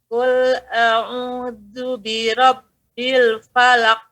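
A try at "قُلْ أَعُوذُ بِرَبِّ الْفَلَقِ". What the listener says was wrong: Lepaskan saja. Falaqu. Karena dia huruf jelas. Seluruh huruf qalqalah huruf jelas. Falaqu. Lepaskan.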